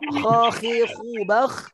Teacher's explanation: Kha-nya di anak tekak yang tergantung. Kalau kita lihat cermin, ada anak lidah yang tergantung tuh kha.